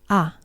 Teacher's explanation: la a si os fijáis no tiene ningún contacto de la lengua con el paladar a Entonces es la más baja en el espectro vocálico en